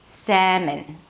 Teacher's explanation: The /seh/ is the primary stress so it's going to be higher in pitch.